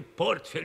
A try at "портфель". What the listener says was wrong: Портфель, ударение не знаете.